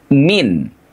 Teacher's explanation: sukun dari huruf nun yang harus kita baca jelas min, karena bertemu dengan huruf ha